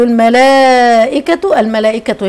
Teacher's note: الملائكه هنا مد متصل واجب اربع حركات